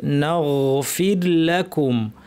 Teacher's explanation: এই রটা আগের হরফে জের থাকায় র সাকিন পাতলা হবে